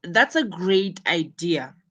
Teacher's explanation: You should notice the emphasis on great, meaning it's the key point.